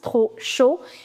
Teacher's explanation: P being the last consonant, you will not pronounce